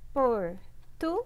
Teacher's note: Geralmente a sílaba acentuada é a sílaba mais forte, então é o guês. Sendo a última sílaba a mais forte, a sílaba tônica, tá?